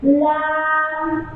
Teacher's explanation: জিহ্বার আগার কিনারা সামনের উপরের দাঁতের মাড়ির সঙ্গে লাগাইয়া লাম